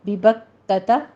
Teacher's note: ببکۃ کاف کے اوپر اس کو موٹا نہیں کرنا